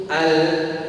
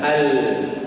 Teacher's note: Sifat bainiyah itu ujung lidah nutup al, keluarlah suaranya dari tepi ujung lidah al.